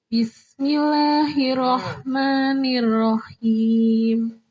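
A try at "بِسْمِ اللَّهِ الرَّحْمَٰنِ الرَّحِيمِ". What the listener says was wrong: Bismillah, tasdid. Bismillah. Roh yang kedua. Bismillahirrahmanirrahim. Tasdid.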